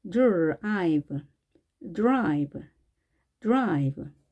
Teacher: 자, 마찬가지로 느, 느, 어, 이렇게 쓰시고 느, 혹은 즈처럼 들리기도 합니다, 가끔. 따라서 드와 즈의 중간 어디쯤에서 발음이 나는 겁니다. 두 개의 소리가 융화가 돼서 dr, dr 이렇게 발음됩니다.